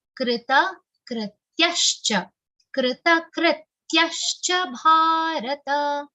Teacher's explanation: The first ta is complete and the second ta is half.